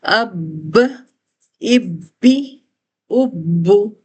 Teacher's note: اب دیکھیں ہم با پر اس کے پلیس آف ساؤنڈ کیا ہے، ہونٹوں کا نمی والا حصہ ملتا ہے، ہم پورے پریشر سے اس کو ملا کے کھول رہے ہیں، ایک جما کے کھول رہے ہیں، لیکن ہمارے ناک میں آواز ہرگز نہیں جا رہی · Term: با پر تشدید, تشدید